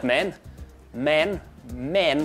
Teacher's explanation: the a that we have in man and ham in the South African accent this is much more like an e sound · I find also that something that helps is the ah sound, the ah that we have in man and ham. In the South African accent, this is much more like an eh sound. So I often launch myself into my South African by going, all right, men, men, men, rather than man.